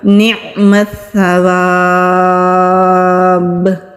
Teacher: با کے اوپر پیش ہے، وقف کی علامت ہے، روکیں گے تو قلقلہ ہوگا۔